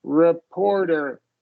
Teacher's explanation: So the second syllable gets the stress.